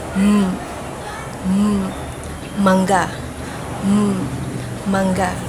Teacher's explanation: At ang paraan ng articulasyon nito ay pailong na may tunog.